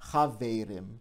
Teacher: that the vowel changes from an a to an a and the stress moves from the first syllable to the second syllable